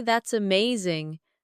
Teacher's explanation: your tone rises with excitement. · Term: Rising tone